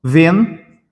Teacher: esse N aqui, ele é nada mais, nada menos que a nasalização do E.